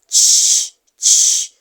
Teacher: It is a palatal affricate because the production of the sound takes place somewhere at the hard palate.